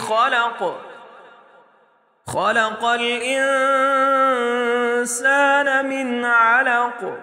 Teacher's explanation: خا موٹے حروف میں سے ہے اس لیے اس کو موٹا پڑھیں گے۔ قاف کو بھی موٹا پڑھیں گے کیونکہ یہ بھی موٹا حرف ہے، اور قاف پر جب وقف کریں گے تو یہ حروف قلقلہ میں سے ہے، تو اس کو ہم جھٹکے سے پڑھیں گے۔